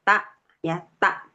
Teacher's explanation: taknya jangan terlalu menekan seperti ain.